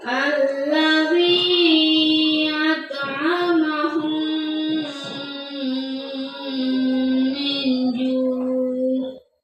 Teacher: Cara membacanya adalah memasukkan huruf mim ke dalam huruf mim disertai dengan suara gunnah sekitar 2 ketukan atau harkat. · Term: idgham mutamatsilain